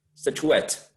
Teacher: I know that the stress should be placed in the last syllable.